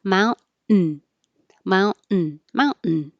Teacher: When your tongue goes up for the T, for mount, you hold your tongue in the T position and you don't release the airflow · Mount and hold it, mountain, mountain, mountain. So it's a very short n, but you can't release the air